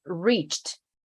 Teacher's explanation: very very subtle T sound no e